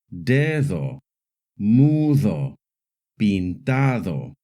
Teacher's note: it can also make a soft D sound, like in the words dedo, mudo, pintado, when the D is between two vowels. The soft D sound is similar to the TH sound in English.